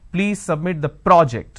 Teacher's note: when I'm stressing on the first syllable it becomes a noun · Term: stress on the first syllable